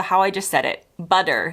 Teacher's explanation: Americans turn butter into, well, how I just said it, butter, sounding like it's with a D? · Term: T-flapping